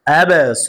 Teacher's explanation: জবরের পরে কাল আলিফ আসার কারণে এক আলিফ টান হবে, মাদ্দে তবাই, ইয়া কা দুল।